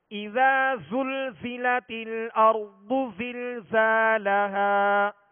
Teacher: زا کو سختی کے ساتھ سیٹی کی آواز میں پڑھنا یہ اس کی خوبی ہے